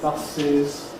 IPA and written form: ˈbʌsɪz (buses)